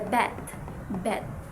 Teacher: there's a stop, then a sudden release of airflow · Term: stops